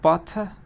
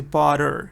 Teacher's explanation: in American say butter, so we don't have the T